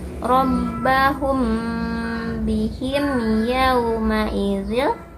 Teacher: Di bihim ini jelas aja idhar syafawi. Mim sukun bertemu huruf hijaiyah selain mim dan ba. Dibacanya jelas pendek.